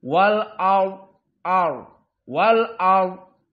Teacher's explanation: Dan juga wal ard. Ra' di sini sakinah. Namun sebelumnya fathah, maka ra' dalam keadaan tafkhim juga.